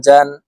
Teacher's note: জিম হরফ জিহ্বার মধ্যখান থেকে উচ্চারণ করব